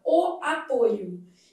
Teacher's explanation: Já o substantivo derivado do mesmo verbo apresenta a vogal o fechada